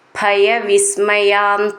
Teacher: ഭ എന്നുള്ള അക്ഷരം നന്നായിട്ട് ഊന്നി പറയാനുള്ളതാണ്